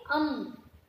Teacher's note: मुंह अपना बंद होकर स्वर बाहर यानी कि नाक से बाहर निकलता है उसको हम अम, अम यानी उसे हम अनुस्वर अनु माफ कीजिए अनुनासिक कहते हैं।